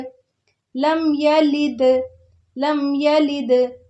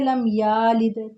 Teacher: اب کچھ اس کو پڑھ جاتے ہیں لم یالد، تو وہ غلط ہو جاتا ہے۔ یا کو بالکل لمبا نہیں ہونے دینا